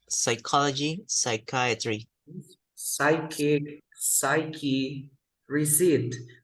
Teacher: we never pronounce the P sound